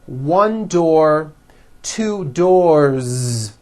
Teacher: with a voiced Z ending